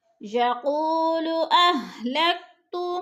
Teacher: یقول کی واو کو لمبا کریں گے اس لیے کہ وہ ساکن سے پہلے قاف کے اوپر پیش ہے تو وہ مدہ ہو رہا ہے، وہ مدہ کو 2 حرکات کے برابر کھینچ کر پڑھنا ہے۔